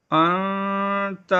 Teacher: حمزہ نون زبر ان، تا زبر تا، انت۔ یہاں نون ساکن کے بعد حروف اخفاء میں سے تا ہے، یہاں غنہ ہوگا